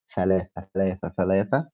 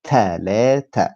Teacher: In Egyptian Arabic, we never say th. This is kind of a difficult pronunciation, so we always replace it with something else.